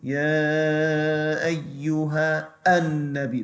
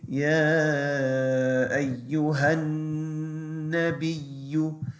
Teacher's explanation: that alif is silent when you are joining one word to the next, when that's kind of at the start of a word. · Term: hamzatul wasl